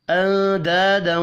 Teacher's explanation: نون ساکن کے بعد دال ہے، اخفاء حقیقی ہوگا، الف مدہ کو 1 الف کے برابر کھینچ کر پڑھیں گے۔